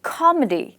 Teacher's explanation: the word comedy has two syllables, and the stress is on the first syllable, comedy. This is the stressed syllable.